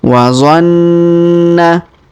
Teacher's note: Huruf na kita tahan dan kita dengungkan 2-3 harokat karena terdapat tanda tasdid di sini.